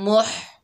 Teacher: हा को हलक के दरमियान से अदा करेंगे